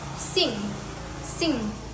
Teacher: The back of the tongue contacts the soft palate, closing off the mouth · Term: nasal